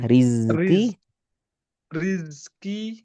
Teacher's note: Rizki tanpa angin. Rizki enggak qalqalah.